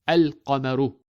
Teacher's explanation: the lam of al is clearly pronounced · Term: moon letters